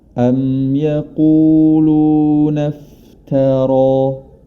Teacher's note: Hati-hati jangan sampai huruf ta-nya ikut tebal, karena ro yang berharokat fathah memiliki sifat yang tebal. Ro ta-nya tetap ta.